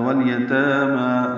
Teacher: تا اور ما برابر 2 حرکات لمبا کریں گے